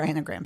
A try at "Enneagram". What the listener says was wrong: Enneagram. It's ENN. Enneagram.